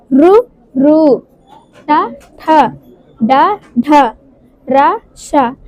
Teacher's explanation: ఇవి మనం దవడతో పలుకుతాము మూడవది మూర్ధన్యము మూర్ధన్యము అంటే అంగుటిపై ఉన్న భాగము అంగుటిపై ఉన్న భాగముతో మనం పలికేవి